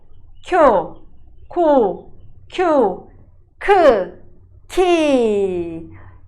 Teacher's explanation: é uma consoante aspirada Então você vai ter que pronunciar com muito ar na boca